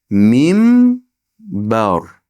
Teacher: Nun, sukunli nun ba harfiga yo'liqib kelsa, mimga almashib ketadi.